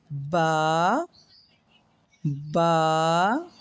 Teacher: Read it a little longer than Alif. Hold the sound for 1 second.